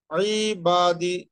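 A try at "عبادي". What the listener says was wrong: শুধু বাতে টান হবে, হ্যাঁ। উনি তো জের দিয়ে পড়লেন, হ্যাঁ।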